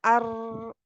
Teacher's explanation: र क्या है दांतों के मसूड़ों से लगते हुए · इसको के रा जो है जैसे पलट हुई आवाज इसको जैसे दोहरी होती हुई आवाज सुनाई देती है आपको जैसे ऐसा लगता है जैसे हम दो दफा कह रहे हैं